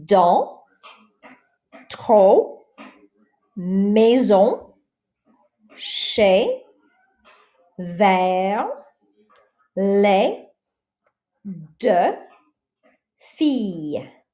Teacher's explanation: So you notice I didn't say any of the S's, I didn't say the X, I didn't say the T, I didn't say the D, etc. There are exceptions, as most things have in language. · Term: final consonants